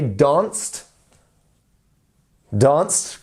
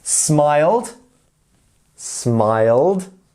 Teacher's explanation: when you have the voiced word, the ones that do add the vibration there, you want to add the D sound.